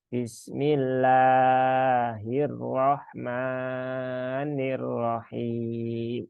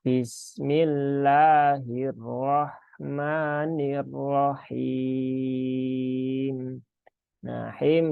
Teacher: Cukup dua ketukan ya di kata Allah dan ar-rahmani Jadi cukup Bismillahirrahmanirrahim di sini ada Mad Arid lissukun ya boleh